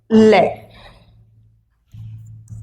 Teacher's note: इसमें हवा का प्रमुख वेग अगल बगल, जीभ के अगल बगल से निकल जाता है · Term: पार्श्विक व्यंजन